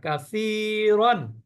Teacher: সা জিহ্বার আগা উপরে দাঁতের আগা